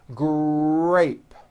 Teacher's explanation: And notice in the word grape, the R sound is stronger and you even hear it more than the G sound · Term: r blends, R blends